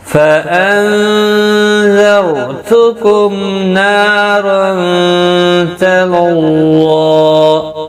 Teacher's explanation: میم ساکن پر اظہار شفوی ہوگا، ظاہر کر کے پڑھیں گے میم کو